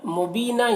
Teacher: یہاں پر یا مدہ ہے، ایک الف کے برابر کھینچیں گے اور یہ وقف کریں گے تو ایک زبر کے ساتھ الف پڑھا جائے گا۔